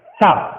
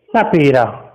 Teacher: दांतों में जीभ को दबाया जाएगा तब ये सा निकलेगा